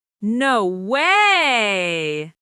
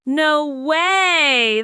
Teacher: How intonation changes. Voice rises sharply. No way! Sounds quick, surprised. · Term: rising tone